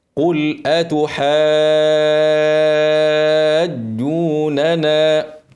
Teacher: في كلمه يبقى كلمي بعد حرف المد ايه حرف عليه شده يبقى مثقل يبقى ده اسمه مد لازم كلمي مثقل بنمده ست حركات